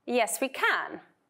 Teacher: So we need to stress the word can. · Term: stressing auxiliary and modal verbs